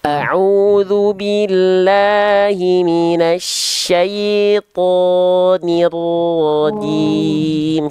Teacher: huruf ro, huruf to diangkat pangkal lidahnya